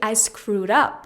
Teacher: it as a verb you have to say I screwed up the stress is going to be more on the preposition up in this situation